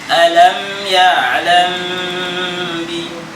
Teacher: mim mati ketemu ba harus ada ziyadah gunnah, harus ada tambahan gunnah. Tahan mimnya. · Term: al-ikhfa syafawi